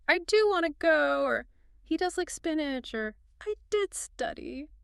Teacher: But sometimes we force the helper in there. We do. We add stress to it.